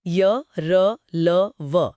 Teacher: अंतस्थ का मतलब होता है बीच में स्थित। इनके उच्चारण में जीभ मुंह के किसी हिस्से को पूरी तरह नहीं छूती। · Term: अंतस्थ व्यंजन